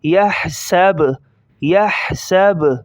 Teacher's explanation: یا حا زبر یح، سین زبر سا، یح سا، با پیش بو، یحسبو، وقفاً یحسب، یحسب۔ با کی پیش کو ظاہر نہیں کریں گے اسٹاپ کے وقت اور ہا کو نکالیں گے۔